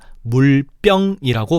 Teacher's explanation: 병의 비읍이 된소리인 쌍비읍으로 바뀌었어